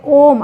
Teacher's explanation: प्लुत स्वर में तीन मात्राओं जितना समय लगता है